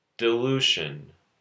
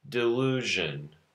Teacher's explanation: Sh is unvoiced, zh is voiced.